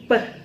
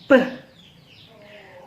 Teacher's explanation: the air passage is completely blocked by closing the lip and raising the soft palate. When the lips are open, the air suddenly escapes from the mouth with an exclusive sound.